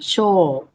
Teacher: This is not a diphthong. This is a long O sound.